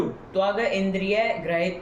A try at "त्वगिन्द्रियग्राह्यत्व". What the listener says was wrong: त्वग इंद्रिय ऐसा अलग क्यों करना पड़ रहा है? त्वग इंद्रिय नहीं बोल पाते हो?